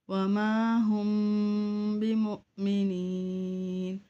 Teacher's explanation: یا مدہ ہے، اسے ایک الف کی مقدار کھینچ کے پڑھیں گے